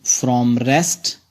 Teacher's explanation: In this very foot, from is unstressed and rest is stressed syllable. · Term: iambic pentameter